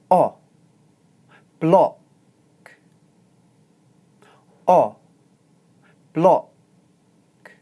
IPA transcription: ɒ